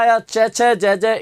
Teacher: तालू से बोला जाता है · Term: च वर्ग